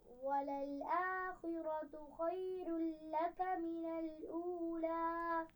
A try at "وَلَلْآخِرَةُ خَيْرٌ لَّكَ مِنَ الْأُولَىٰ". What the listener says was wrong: خیر میں را بھی موٹی پڑ جائے گی. خیر لک، خیر لک.